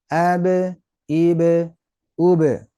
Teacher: kekuatan pantulan bunyi hampir sama dengan vokalnya artinya saat kita mantul jangan sampai dihilangkan suaranya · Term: Qalqalah